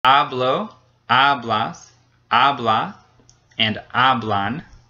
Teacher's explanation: all have the same syllable stressed the first one the one right before the ending